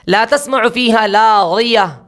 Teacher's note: غین ہے استعلاء ہے تو ایسا بھی نہ ہو، اتنا استعلاء نہ ہو کہ جس کی بنا پر غی جا کر غوی ہو جا رہا